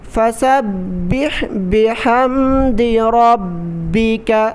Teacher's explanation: ہا کی آواز نکالیں، گلے سے نکالیں، فَسَبِّحْ بِحَمْدِ رَبِّكَ، را پر زبر ہے، را کو موٹا پڑھیں گے، را کو با کے ساتھ ملا کر پڑھیں گے سختی کے ساتھ، رَبِّكَ۔